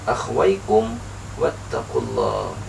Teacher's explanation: cara membacanya adalah dengan dijelaskan Jadi huruf mim mati dibaca jelas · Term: izhar syafawi